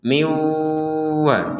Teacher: Masih ingat ini bagaimana tadi? Dimasukkannya nun sukun kepada wawu disertai dengungan.